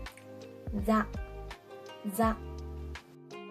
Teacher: Y es que no se pronuncia como una Z española, ni tampoco como una S. Se pronuncia como una S, pero con vibración de las cuerdas vocales.